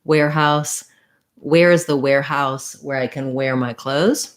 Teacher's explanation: They all have that air diphthong. Again, another thing to look at, writing it, thinking about it, visualizing it in a way where you can get the vowel sound correct can be really helpful.